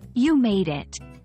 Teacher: For "you made it," the stress typically falls on the word "made." It's often said with a rising intonation at the end, especially when celebrating an arrival.